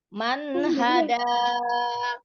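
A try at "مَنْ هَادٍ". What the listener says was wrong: Di panjang pendeknya.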